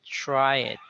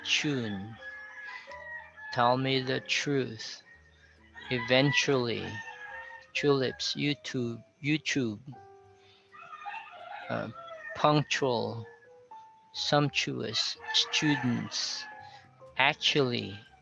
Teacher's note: the t here when it's followed by an r sounded as a ch sound